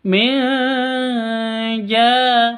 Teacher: nun mati bertemu dengan Jim cara bacanya samar didengungkan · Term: ikhfa Hakiki